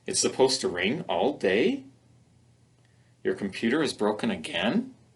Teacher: we can make them as questions by using rising intonation pattern